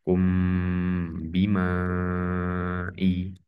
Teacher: Mim sukun dibaca mim sukunnya dibaca sukun sambil dengung. Ya, jadi sini masuk ke dengung ke ba. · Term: ihfa syafawi